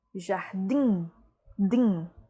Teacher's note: última sílaba mais forte, tônica, oxítona